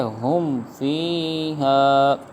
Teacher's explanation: اب یہاں پر ہم نے گنہ نہیں کیا کیونکہ میم ساکن کے بعد حرف با اور میم کے علاوہ کوئی حرف آ رہا ہے